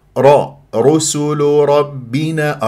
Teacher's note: الراء هنا مفخمه لانها مفتوحه تقرع الراء